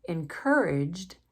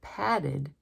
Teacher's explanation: Encouraged has the D sound, but padded has the id sound.